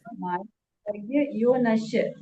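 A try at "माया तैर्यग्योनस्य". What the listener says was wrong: श नहीं, स, आधा स है, शक्कर वाला नहीं है स, सामान्य स है, प्रैक्टिस कीजिएगा उसकी।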